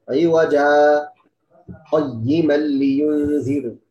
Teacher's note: Saktah tidak ambil nafas, ya.